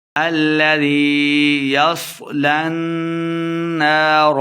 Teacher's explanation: لام کو نون کے سامنے لا کے پڑھیں گے اور غنہ بھی کرنا ہے